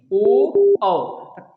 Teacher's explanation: कंठ से भी आवाज आ रहा है और ओष्ठ का भी प्रयोग हो रहा है, ओ औ दोनों का प्रयोग हो रहा है।